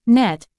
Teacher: Similar to M, this sound is produced by closing the mouth, specifically the tongue against the roof of the mouth, and allowing the air to pass through the nose. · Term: nasal sound